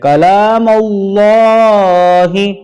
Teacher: جلالت کو پر پڑھیں گے کیونکہ اس سے پہلے زبر آ رہا ہے